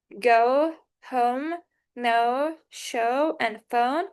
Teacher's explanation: It starts with a mid-central vowel, like the weak sound in about, and glides toward a close backgrounded vowel, like the oo in book, oo in book. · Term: goat diphthong